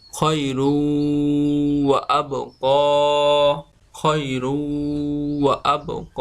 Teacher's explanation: ক খাইরু আবক তানবিনের পরে ইদগামে বা গুন্নার হরফ ওয়াও এজন্য তানবিনকে তানবিনের উচ্চারণকে গুন্না করে পড়তে হবে